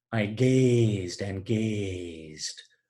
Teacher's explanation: Obviously repetition of that long mid-vowel, A.